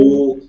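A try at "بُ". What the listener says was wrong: আচ্ছা উ উ বলবো না আমরা যারা বলতেছেন এখনো এগুলো ভুল আছে আমরা বু বলবো বারবার বলতেছি বু বলবো আর এই ওয়ার ক্লাসটা বারবার করবেন একটু ইউটিউবে দেখে বারবার করেন ঠিক আছে এরপরে বা মিম এটা কোনো ঝামেলা নাই বা জবর বা বা জের বি বা পেশ বু বা বি বু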